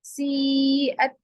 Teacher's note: مد متصل ہو رہا، یعنی مد واجب کہیں گے، جس کو ہم ضرور کھینچیں گے 5 الف کے برابر